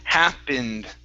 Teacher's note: So when you see that word happened, okay, that ending is going to be more like this. Okay, happened, like a short I into an N and a D